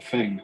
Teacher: he doesn't pronounce the TH sound, So instead of saying thing, he says thing.